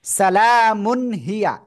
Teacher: স্পষ্ট আকারে পড়তে হবে কোন গুণনা করা যাবে না